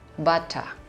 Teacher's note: Seolah-olah tidak ada huruf R di situ, silent R.